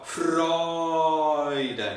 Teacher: We sing on a very tall open vowel. Freuden. And then we let the diphthong enter.